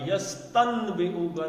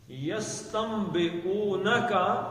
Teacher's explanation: لیکن نون ساکن کے بعد بے آ جائے تو اس نون کو کیا پڑھیں گے؟ میم پڑھیں گے. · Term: اقلاب کا قاعدہ